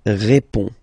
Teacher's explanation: So, final D is not pronounced. You only have this on nasal sound at the end.